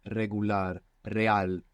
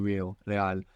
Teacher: And actually, you need a very relaxed mouth to pronounce this R, because you're kind of lifting your tongue up a little bit and letting the air flap it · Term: rolling R